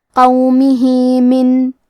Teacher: یہاں حکم ہے مد صلہ صغرا، مطلب ہم اپنی آواز 2 مد کے برابر لمبی کریں گے · کلمت قومہ میں حرف القاف کو زبان کی جڑ اور تالوں کے نرم حصے سے پڑھیں گے. کیونکہ قاف حروف تفخیم میں سے ہے تو ہم یہ حرف کو موٹی آواز میں پڑھیں گے. حرف المیم کے نیچے زیر ہے تو ہمیں میم کو ظاہر کرنا ہے.